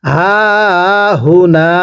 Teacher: গোল হাগুলো উচ্চারণ করার সময় গলার মাঝখান থেকে আওয়াজ করে পড়তে হবে